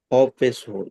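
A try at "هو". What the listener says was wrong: হ্যাঁ, এটা হ বলছেন, এটা হ হবে না, এটা হা পেশ হু। হা পেশ হু। জুনাহু।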